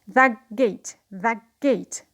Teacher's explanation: So here the t becomes k before g.